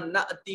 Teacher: حمزہ ساکن ہے، جھٹکے سے ادا کیا جائے گا